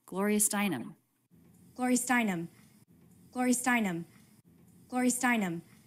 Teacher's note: there's no separation between these words they're linked smoothly together because they're part of the same thought group